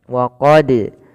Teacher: ini ada bacaan qalqalah kembali, yaitu adanya huruf dal yang dipantulkan ketika melafalkannya, dan ini kita namakan dengan qalqalah.